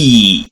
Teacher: It is front close because the mouth is almost closed when you pronounced E sound and the tongue goes up and front